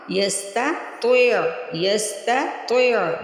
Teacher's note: اور لاسٹ میں عین کی آواز آنی چاہیے، حمزہ کی نہیں، اور نہ ہی اس پہ جھٹکا لگنا، ٹی کر ہی پڑھنا.